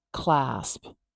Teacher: p at the end, that little pop of air from your lips.